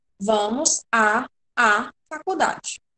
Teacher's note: A gente junta os dois As, o A, preposição, e o artigo, né? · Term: crase